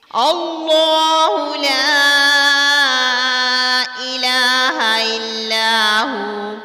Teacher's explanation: ہم پہلے والے اللہ کو کیوں پر پڑھتے ہیں؟ کیونکہ اس سے پہلے والے حرف پر زبر ہے، اس لیے ہم اللہ کے لام کو پر یعنی موٹا پڑھیں گے۔ البتہ باقی جو لام ہے اگر اس کے اوپر زبر، زیر پیش یا کوئی بھی حرکت آ جاتی ہے، ہر حال میں باریک ہی پڑھا جائے گا۔